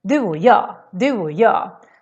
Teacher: We skip the ch here and just make it a little o instead. Och becomes o when we talk.